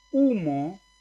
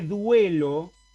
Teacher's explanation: La U de humo es vocal, pero la U de duelo es semiconsonante.